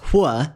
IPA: ʍ